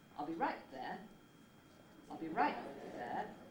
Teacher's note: jump up hit a high note on the right and then get to your nucleus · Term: high head